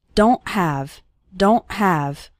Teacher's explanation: don't really pronounce the T strongly so don't say don't okay it's more of a stop at the back of your throat the sound cuts off very suddenly